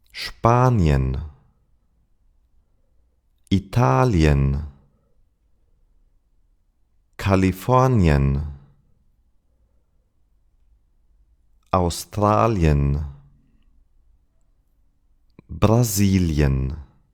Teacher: But that's only the case if the IE is stressed. If it's in a syllable that is unstressed, the pronunciation is ye, as in yellow.